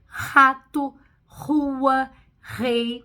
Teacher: o r forte que é o r na garganta que a gente usa no início das palavras